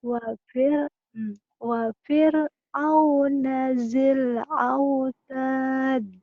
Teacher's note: Dalnya menjadi kolkola kubro